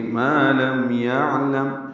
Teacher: میم ساکن پہ اظہار شفوی، یعنی ہونٹ بند کر لیں گے